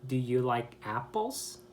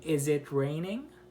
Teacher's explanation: And what you'll notice is that at the end of the word, at the end of the sentence, the last word in that sentence, the intonation goes up. And that is to indicate a meaning that you're asking a question, which is a yes or no question. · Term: rising intonation